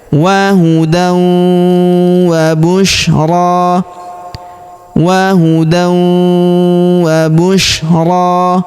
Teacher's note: Perhatikan tanwin an huruf dan bertemu huruf wau berharakat tasydid maka tanwin annya melebur masuk ke huruf wau yang berharakat tasydid. Kita tahan dan kita tekan. Serta kita dengungkan dua sampai harakat.